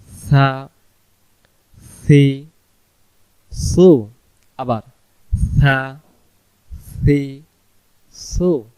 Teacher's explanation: জিহ্বাটার আগা থেকে হালকা বাতাস বেরোবে সোন সিন সান সোন সিন সান। সা অক্ষরে জিহ্বার আগা থেকে নরম করে পড়তে হয়।